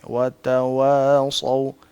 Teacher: ایک تو ہونٹوں کو گول کر کے واو کو بولنا ہے